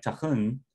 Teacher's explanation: tahun, bears stress on the second syllable